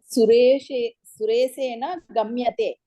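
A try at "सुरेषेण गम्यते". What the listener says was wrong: సా కాదండి అది ష. సురేషేన గమ్యతే.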